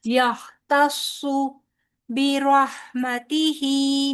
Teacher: तो आपने अदायगी करते वक्त बहुत ज्यादा ध्यान करना है कि हा और सौद की मोटी अदायगी के दौरान आपका ता मोटा ना हो जाए